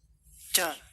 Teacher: mengarah ke bagian punggung lidah, baik punggung lidah depan ataupun sampai ke arah tengah, dan ini biasanya terdengar seperti huruf C bahasa Indonesia ya. Ca gitu ya.